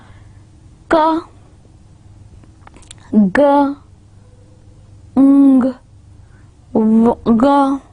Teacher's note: Now you are not using your tip of tongue, no, you are not using your teeth or your lips or your hard palate, rather you are using back of your tongue and your soft palate. Ka, ga, ng, ga. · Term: velars